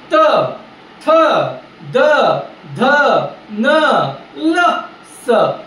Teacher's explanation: त म्हणताना तुझा जिभेचा शेंडा जो आहे ना तुला दाताच्या मागच्या बाजूला जाऊन चिटकाला हवे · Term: दंत्य वर्ण